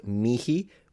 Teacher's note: in classical Latin can be pronounced mihi with an actual aspirated H, or you can just say me.